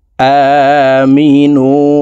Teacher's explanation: হামজার উপরে খাড়া জবর আছে, তাই হামজাকে এক আলিফ টেনে পড়তে হবে